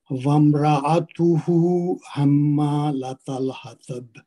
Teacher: ہما میں پھر میم مشدد ہے، اس پہ غنہ کریں گے. ساتھ میں اس کے الف ہے، الف مد ہے، تو اس کو 2 حرکت بھی لمبا کریں گے غنہ کرنے کے بعد. · را کو پر پڑھیں گے، را پہ زبر ہے اس کو موٹا پڑھیں گے. اتہو میں الٹا پیش ہے جو کہ بدل واو مد ہے، اس کو 2 حرکت لمبا کریں گے